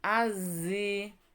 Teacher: huruf alif lam nya melebur tidak Al tapi langsung lam nya ilang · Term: alif lam syamsiyah